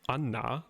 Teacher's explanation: for anna you're closing off air flow from your lungs everywhere except through your nose right through your nasal cavity so anna that in is what